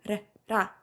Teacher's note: It's not r like in the English language. It's r closer to l, soft r.